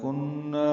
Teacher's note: کنّا، کن میں نون مشدد پہ غنہ ہے، نا الف مدہ ہے، دو حرکات لمبا ہے